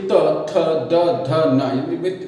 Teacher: त, थ, द। जो जीभ है, जीभ का अगला भाग है वो दांतों से स्पर्श करेगा, दांतों को स्पर्श करेगा, वो दंत व्यंजन कहलाते हैं, दंत वर्ण कहलाते हैं।